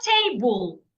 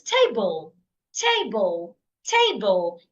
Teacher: syllables if the word is a noun or an objective then stress the first syllable that means you say the first syllable louder longer and clearer